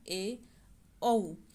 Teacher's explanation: वायु का संकुचन वो बहुत कम होता है, और इसे अर्ध विवरित कहे जाते हैं